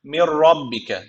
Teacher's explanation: okunacak gunnesiz şekilde katacağız yani Mir rabbike yani burada nasıl okunuyor şu nun Hiç okunmuyor şu mim harfi ra harfine bağlanıyor ama ra harfi şeddeli gibi okunuyor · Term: bilag gunna tecvidi